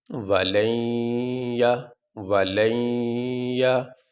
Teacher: نون ساکن کے بعد یا آنے کی وجہ سے اس نون کو اس یا میں داخل کر دیا گیا۔ اب یہاں پہ اس لام کو اس یا کے ساتھ ملا کے پڑھیں گے تو پڑھنے میں یہ نون ظاہر نہیں ہوگا، بلکہ یہاں یا کے ساتھ ملائیں گے اور یہاں پہ غنہ ہوگا۔